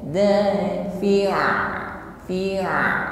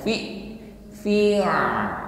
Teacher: keluar bunyi tawassut ini dari makhraj, yaitu wasadul halq, tenggorokan bagian tengah. Dafi'a, fi'a, dan masih ada suara yang mengalir, tidak boleh tertahan.